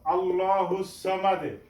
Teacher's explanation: এখানেও ল উচ্চারণ করব মোটা করে